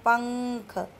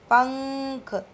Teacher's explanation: अनुस्वार का उच्चारण करते समय आवाज़ सिर्फ केवल नाक से आती है, जैसे कि पंख, ठीक है, पंख, तो सिर्फ नाक से ही साउंड आ रही है।